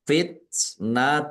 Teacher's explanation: ta sukun keluar s sedikit